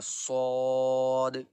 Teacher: آواز سختی ہوگی سین کی طرح لیکن تھوڑا موٹا ہوگا